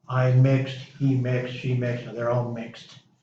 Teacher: you're adding an ED to the end of it, but you're not pronouncing E, and the D you're pronouncing as a T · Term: T sound